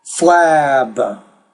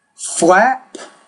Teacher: when it ends in B the vowel will be longer when it ends in P the vowel is going to be shorter